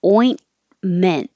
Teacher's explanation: ointment yesterday the oi your tongue has to rise and so once you get to the in position and you're you're stopping the airflow you don't have to say the T